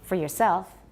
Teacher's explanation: we never stress your, almost never stress your